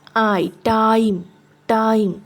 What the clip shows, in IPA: taɪm